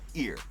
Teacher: the H sounds totally disappear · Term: silent h